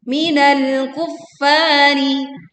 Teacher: tekan fa bertasydid, fa-nya dibaca panjang 2 harokat